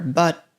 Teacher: it gets reduced again so we have a schwa sound and the final T is stopped